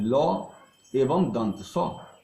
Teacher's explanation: ल एवं दंत स का उच्चारण दांत से होता है, इसी कारण ये दंत वर्ण कहलाते हैं।